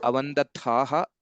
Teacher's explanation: Avandathaha, tha Mahaprana, and then similarly Avandeetham, here also Mahaprana